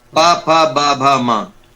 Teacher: ये ओष्ठ कहलाते हैं, जो ओठ से बोले जाते हैं। हमारी जो जीभ है वो ओठ से लगती है, ओष्ठ कहलाते हैं ये।